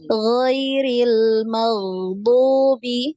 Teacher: huruf ghain ya disukun ini dialirkan ya. Tadi masih tertahan, suaranya masih tertahan.